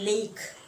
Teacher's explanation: the sides of the tongue are lowered and allowing air to escape freely through the sides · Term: lateral sounds